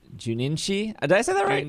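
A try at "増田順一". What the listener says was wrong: Junichi. There's no extra N in there.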